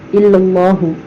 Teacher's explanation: اللہ کے لام کو موٹا پڑھیں گے کیونکہ اللہ کے لام سے پہلے زبر آ رہا ہے